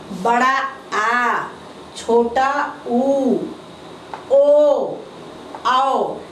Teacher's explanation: बेटा ये पश्च स्वर है, पश्च स्वर है, जीभ का पिछला भाग ऊपर उठता है। इसको जब आप लोग घर में बोलेंगे, देखेंगे, तभी समझ में आएगा कि जीभ का पिछला भाग जो है ऊपर उठता है।